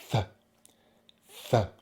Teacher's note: So we have our tongue here and our top row of teeth, and it kind of sits like this, and we blow air between the teeth and the tongue. And then we also pull the tongue back like so. Th, th. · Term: unvoiced TH